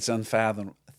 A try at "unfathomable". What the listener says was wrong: There's an N. I think you're missing the N. It's messing you up. Fathom. Fathom. Fathom. Fathomable. See, there's an N in there. There is an N.